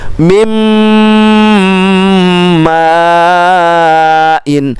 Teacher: nun sukun bertemu mim dibaca dengung. Istilah ilmu tajwidnya itu adalah idgham bi gunnah.